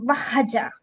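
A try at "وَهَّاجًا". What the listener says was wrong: ఇదిగా చేయలేదు. వహాజ హా మీద శ్రద్ధ ఉంది, అలిఫ్ మద్ ఉంది. వహాజ జాకు అలిఫ్ మద్ చేసి ఆపాలి కదా, జీమ్ మీద ఫత్తతేన్ ఉంటే. వహాజ జా కాదు, జా.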